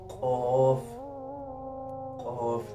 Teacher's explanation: जुबान का जड़ जो कवे के पास है ये जब ऊपर तालू से लगे तो कफ अदा होता है